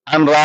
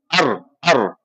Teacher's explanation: بغیر غنہ کا مطلب ہے کہ نون، بالکل نون کی کوئی آواز نہیں، ناک میں لے کے نہیں جانا ہے